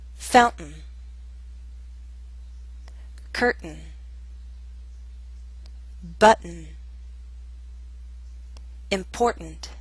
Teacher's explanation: We use a glottal stop before the sound n. That's an unstressed N sound.